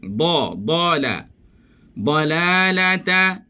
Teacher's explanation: Situ da sahaja yang tebal. Yang lain semua nipis.